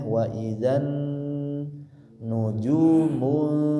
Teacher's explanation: Ada dua tempat mendengung, nun bertasyid dan juga nun yang dibaca samar. · Dilanjutkan di sini di ayat kedua, wa idzan, sama ini tulisannya panjang bacanya pendek. Di sini ada nun bertasydid ya, maka ditahan dengungnya